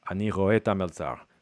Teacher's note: people have really collapsed et ha into ta, where the second H is not pronounced, the first vowel is not pronounced, so you get like ani roe ta melzar.